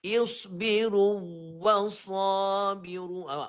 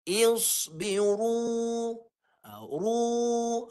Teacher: Wau pertama masuk pada wau kedua. Dia tak tetaplah bunyi dia berubah. Ru ru kan berubah-rubah tu dia tak dia tidak baca dengan satu bunyi ada bunyi kedua pula.